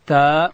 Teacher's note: تا ادا کیږي چې کله د لوړې زامې د مخ دو غاښو بیخو ته د ژبې سر وروړو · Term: حرف تا